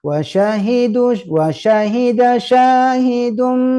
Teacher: jadi dua huruf ini harus dipastikan keluar dari tengah lidah huruf ya dan huruf Sya